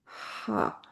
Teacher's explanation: हा एक तेज और बे आवाज हरफ है।